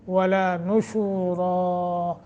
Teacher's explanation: را کو موٹا، نون کے اوپر ضمہ کر پڑھیں گے